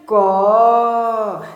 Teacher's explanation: जब लंबा टाइम तक बोलिएगा ना तो आपको पीछे में छुपा हुआ दिखेगा जिसको हम बोलते हैं अ। तो हम लोग प्रोनाउंसिएट करेंगे क, ऑटोमेटिक आ रहा अ, ऑटोमेटिक है ना, हम लोग बोले नहीं लेकिन वो आ जाता है।